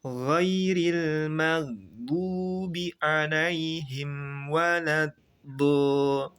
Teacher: Waladdo do tebal, gho tebal. Ghairi ri jangan tebal, ghairil jangan tebal, magdu nggak boleh jeda, nggak boleh magdu dan juga nggak boleh pantul.